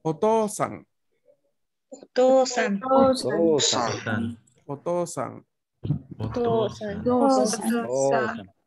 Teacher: Porque esta U, al mismo tiempo que la I, en estos casos, está aquí para indicarme que la O se lee larga. Por ende, no se pronuncia como U, se pronuncia como otra O.